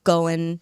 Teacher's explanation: there was definitely a lot of uh like G dropping at the end of gerunds